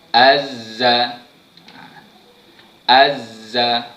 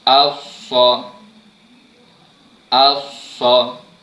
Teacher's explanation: Baik, untuk 3 huruf ni, zai, sin dan shad, saya ulang sekali lagi. Hujung lidah kita tekankan pada gusi gigi gunting belah bawah.